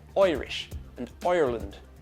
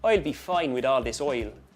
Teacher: The i that we get in like or height, or even at the beginning of the word Irish. It becomes like an oi, almost like the oi in oil. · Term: the I sound